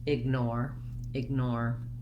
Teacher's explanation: i'm going to add my short unstressed sound with my voiced g